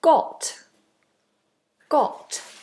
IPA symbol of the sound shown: gɒt